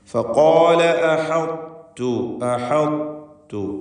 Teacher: ത്വാഇനെ പൂർണ്ണമായും ലയിപ്പിക്കുകയല്ല, ഭാഗികമായി ലയിപ്പിക്കുന്നു. അതുകൊണ്ടാണ് ശേഷമുള്ള തായിന് മുകളിൽ ഷദ് എഴുതാതെ ഇട്ടിരിക്കുന്നത്, ഷദ് എഴുതാത്തത്. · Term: ഇദ്ഗാമുൽ മുതജാനിസൈനി സഗീർ